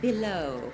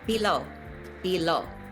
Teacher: with a shorter o at the end and a longer e in the middle